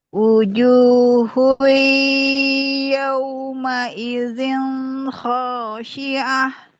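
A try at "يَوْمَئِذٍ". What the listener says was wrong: Yauma idzin n harus jelas ya. N jelas. N-nya jelas sudah ditahan. Yauma idzin khashi'ah.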